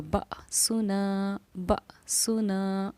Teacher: حمزہ ساکنہ کے پڑھنے میں ہمارا جھٹکا ہوگا